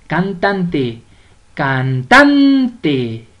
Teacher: lleva la mayor fuerza de voz en la penúltima sílaba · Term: palabra grave